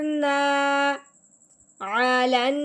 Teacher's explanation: اب یہاں پہ مد والا حرف آ گیا، مد مطلب ایک الف کے برابر لمبا کرنے کی وجہ کیا بنے گی کہ الف سے پہلے حرف پہ جب زبر آ جاتی ہے تو وہ پہلے والا حرف الف کے ساتھ ملتے ہوئے ایک الف کے برابر لمبا ہوگا